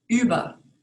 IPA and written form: ˈyːbɐ (über)